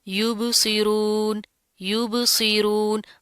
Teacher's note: با کے اوپر جزم آ رہی ہے، قلقلہ کریں گے، جھٹکا دیں گے